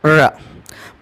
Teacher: अर्थात जिसके उच्चारण में जिह्वा मूर्धा के घर्षण करती है उन्हें प्रकंपित या लुंठित व्यंजनों के नाम से जाना जाता है।